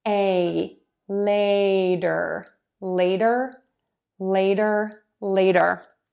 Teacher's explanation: you're going to have a long a sound you're going to start with really wide open mouth for that and then move to a smile